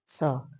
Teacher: ये दंत अवयव इसमें सहयोग करता है, इसीलिए इस स का एक दूसरा नाम दंती स भी है। इस स को दंती स भी कहते हैं।